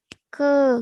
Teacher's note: KE tulisannya ke, KE, nggak pakai angin